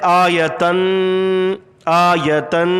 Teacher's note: لکم آیتن، تنوین، دو زبر دو پیش اور دو زیر، دو زبر دو زیر اور دو پیش، اس کو تنوین کہتے ہیں. تنوین ایک الف کے برابر ناک میں آپ جو ہے وہ اس کو غنہ کریں گے